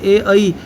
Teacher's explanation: कंठ तालु, कंठ तालु से बोले जाते हैं ए ऐ। इसमें मुंह के दो भाग यूज होते हैं।